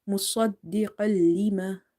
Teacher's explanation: if you see letter lam, you will do idgham, but you will not do gunna. This idgham is without gunna here.